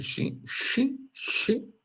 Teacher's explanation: tem o som de x, pronunciado com a parte posterior da língua próxima a shin, shin, shin, ok?